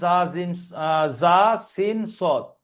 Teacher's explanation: 13 নম্বর মাখরাজ জা, সিন, সদ, জিভের আগা সামনের উপরের এবং নিচের দুই দাঁতের আগার সাথে লেগে উচ্চারিত হবে